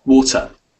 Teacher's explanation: So we hear the T, which is great, but we don't hear the ending.